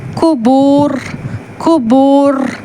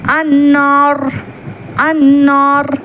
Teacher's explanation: இறுதியாக அந்த சுக்கூனுடைய உச்சரிப்பில் வரும் ராவிற்கு முன்னால் மத்துடைய வாவ் அல்லது அலீஃப் வருமானால் அந்த ராவை கனமான உச்சரிப்பில் ஓத வேண்டும்.